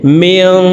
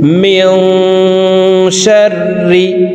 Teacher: নুন সাকিনের পরে ইকফার 15টি হরফের ভিতরে একটি হরফ শিন আসছে, এই কারণে এই নুন সাকিনকে নাকের ভিতরে লুকাইয়া গুন্নার সহিত পড়ব। মিং, শিন র জবর শার, র জের রি, মিং শাররি। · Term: ইকফাহ গুন্না